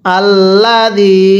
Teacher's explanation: এই জালের মধ্যে আমরা তিন আলিফ টান দিব